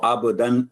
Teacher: با پر کلکلا ہوگا، حروف کلکلا میں سے ہے با